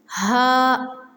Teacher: حلق کے آخری حصے سے ہا ادا ہوتا ہے